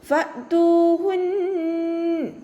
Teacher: ഓതുട്ടോ ഹക്ക് ശബ്ദം വന്നിട്ടുണ്ട് രണ്ടട് അക്ഷരങ്ങൾ ഉച്ചരിക്കുന്ന കനം കൊടുക്കുക ഫതഹ [പാടുന്നു] ഫ ലൈറ്റ് ആക്കിയിട്ട് ഉച്ചരിക്കുക മേലെ മുൻപല്ലിന്റെ അറ്റം താഴെ ചുണ്ടിന്റെ ഉൾവശത്തേക്ക് നനഞ്ഞ ഭാഗത്ത് വെച്ചിട്ട് ഉച്ചരിക്കുക